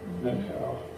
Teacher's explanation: it's important that it's two syllables without a TH sound